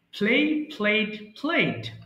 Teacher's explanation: দুই ঠোঁট একসাথে আপনারা উচ্চারণ করবেন